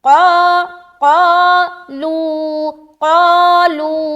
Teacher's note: قاف کو موٹا کرنا ہے، الف کو بھی موٹا کرنا ہے، قا قالو قالو، دونوں جگہ کھینچیں گے برابر۔